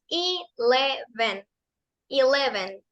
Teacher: La E se pronuncia como una E larga, que suena como I, y las otras dos E's suenan como una E corta, que suena como E.